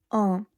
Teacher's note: Notice the sound of N is nasal. Your tongue is not touching the palate when you say un. It is coming from the nose.